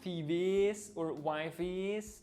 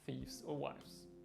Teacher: the ES is no longer an is sound, but only an S sound. The E is silent.